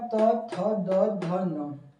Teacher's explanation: इनको उच्चारित करते समय आपका जो है जीभ का जो है दांतों से आपका टकराती है